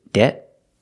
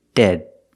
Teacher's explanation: One's a stop T and one's a stop D. But other than that difference, they're pronounced almost the same.